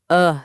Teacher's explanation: a soft, relaxed uh sound that appears in unstressed syllables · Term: schwah